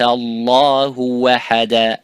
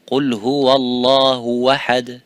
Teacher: ha and the hamza from the same position, from the same point of articulation, and that's why it drops down.